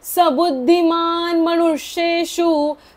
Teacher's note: आता जो श आहे त्याच्या वेळेस जीभ वरती न्यायची आहे, कारण ष षटकोनातला आहे, शहामृगातला नाहीये.